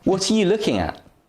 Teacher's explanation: the stressed words here are what and looking r and u are weak they're pronounced has a weak form